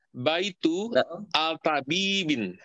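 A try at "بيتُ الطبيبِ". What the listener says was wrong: Alifnya tidak usah dibaca, Pak. Nanti ini jadi kan bintun atau bibu gitu ya. Bintun atau bibu asalnya. Tapi ketika disambungkan jadi bintut tobibi begitu.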